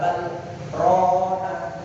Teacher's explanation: kalla bal macane bal tapi dipedhot niku jenenge saktah tanpa ambil nafas